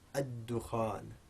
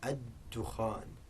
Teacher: One of the sun letters, meaning that the lam is going to elide into the dal · the lam is made completely silent